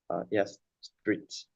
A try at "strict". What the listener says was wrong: There should be 2 T sounds. Kind of. You're saying street. We want to say strict. So just say the sound strict, like, and do what I'm doing where my mouth is going back. Strict. Strict.